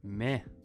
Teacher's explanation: In Scottish English, the E in the meh gets slightly extended where it sounds like this, meh.